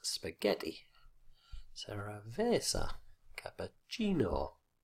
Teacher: it's the second last syllable which always carries the stress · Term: fixed stress